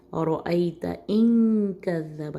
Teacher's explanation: یہاں پہ بھی اخفا کا غنہ ہے کاف کی وجہ سے